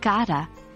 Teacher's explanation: in the phrase, got to, the T in got is often elided, leading to a pronunciation like gotta